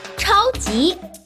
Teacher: 超 first tone. 级 second tone.